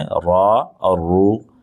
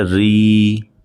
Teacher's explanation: تو پیش والے کو اور زبر والے کو ہمیں موٹا پڑھنا ہے، یعنی آواز کو تھوڑا سا بھاری کرنا ہے، را اور رو، اور زیر والے میں ہمیں پتلا پڑھنا ہے، ری